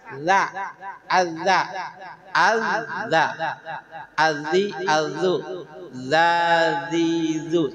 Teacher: dari ujung lidah ah bertemu dengan dua gigi atas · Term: makhraj Za